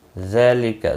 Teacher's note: ذال کے اوپر کھڑی زبر ہے، ایک الف کے برابر کھینچ کر پڑھیں گے